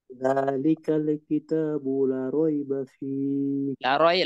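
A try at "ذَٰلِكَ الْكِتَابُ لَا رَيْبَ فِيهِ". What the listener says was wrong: লাতে এক আলিফ টান আছে, লা রাইবা ফীহ।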